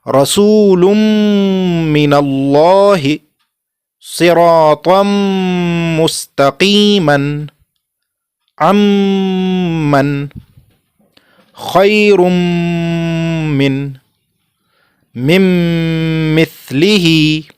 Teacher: Idgham of noon saakin or tanween before the letter mim.